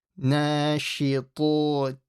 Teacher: To is a very heavy mouth letter. So make sure you make the to heavy. Nashitoti. And again, make sure you don't stretch that T.